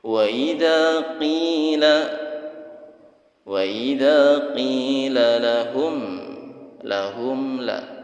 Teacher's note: mim sukun bertemu dengan lam. Mimnya dibaca jelas mim sukunnya. Idhar syafawi.